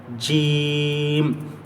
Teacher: यह जबान का बीच वाला हिस्सा ऊपर के तालों पर लगाएंगे